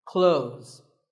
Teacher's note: silent here well first of all this word is not cloths when we say clothes the th in the middle can often be silent